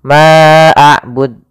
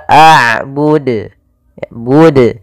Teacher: Ma'abud, ini nambahkan hamzah. Harusnya tidak boleh ditambahkan hamzah, tetap dijelaskan qalqalahnya.